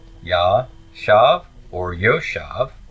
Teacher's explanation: The first syllable is open. My tone is on the final syllable, that's stressed